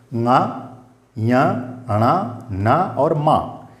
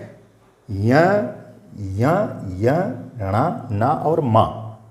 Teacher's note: इनको अनुनासिक वर्ण इसलिए कहते हैं क्योंकि इनका उच्चारण हम बिना नासिका के नहीं कर सकते हैं। नासिका माने नाक, बगैर नाक के इनका उच्चारण हम कर ही नहीं सकते हैं, और स्थान भी लगेंगे मुंह के, लेकिन नासिका का जरूर इसमें योग होगा।